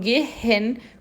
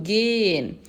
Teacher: Eu não falo gehen com esse H, eu falo, esse H é mudo